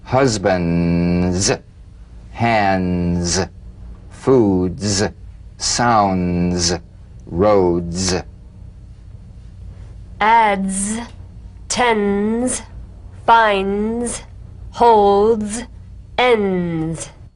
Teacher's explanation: crush crutch the the voiced tongue point plus tongue blade consonant press the tongue against the upper gum ridge for the d drum beat and peel the tip down a bit as the z vibrates just before the tongue springs away use a light staccato treatment without sustaining the z z so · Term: resonant staccato zip